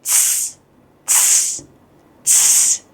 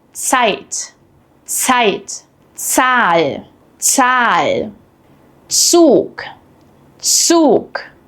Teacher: But in German, Z is completely different. It's pronounced like a ts sound, as in cats.